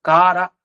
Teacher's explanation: ಶಬ್ದಗಳನ್ನ ಇದಕ್ಕೆ ಏನ ಅರ್ಥ ಕಾರಾಗಾರ ಗ್ರಹ ಅಂದ್ರೆ ಕಾರ ಅನ್ನೋ ಶಬ್ದ ಇದೆಯಲ್ಲ ಖಾರ ಅಲ್ಲ ಮಹಾಪ್ರಾಣ ಅಲ್ಲ ಅಲ್ಪಪ್ರಾಣ ಕಾರ